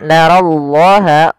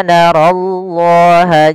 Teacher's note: Kemudian pada lafal narallaha, ro-nya dibaca dengan tebal, di sini diwarnai dengan warna biru menandakan dia ro-nya dibaca dengan tebal.